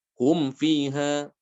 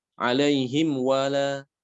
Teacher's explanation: Mim sukun setelahnya huruf waw. Ini semuanya mimnya dibaca dengan jelas atau izhar.